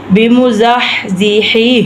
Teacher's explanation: الف سنۃ وما هو بمزحزحہ، اب یہ حلق والا ہا ہے، یہ دونوں یہ موٹا ہا ہے، تو ہم نے ان کے حروف کو یہ ادا کرتے وقت پورا ہم نے اس طرح پڑھنا ہے کہ پڑھتے وقت یہ پتہ چلے یہ موٹا ہا ہم نے ادا کیا ہے، یہ حلق والا ہا جو ہے ہم نے ادا کیا ہے